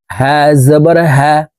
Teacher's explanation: এই হা হরফের উচ্চারণ হলকের শুরু থেকে পড়তে হবে